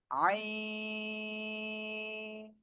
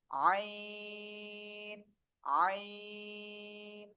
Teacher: গলাটা চেপে চার আলিফ টেনে পড়বো আমরা।